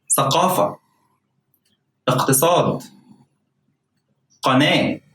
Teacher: to pronounce the cough as it is a hard k sound k sound that is pronounced further back from the throat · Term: qaf